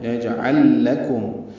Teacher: مر رحمتی ویجعل لکم، جیم ساکن پہ قلقلہ ہے، دونوں لاموں کا آپس میں ادغام ہے، یجعل لکم، جب بھی ایک حرف ساکن ہو اس کے بعد وہی حرف آئے تو ان دونوں کا آپس میں ادغام کیا جاتا ہے، اس لیے دونوں لام آپس میں ملا دیے گئے ہیں۔